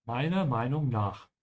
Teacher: The R, when you're pronouncing it, is very slight, depending on the region in Germany. But it exists, and make sure to remember that it exists, so whenever you write it, you actually write it.